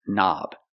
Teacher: don't pronounce the k start with the n Sound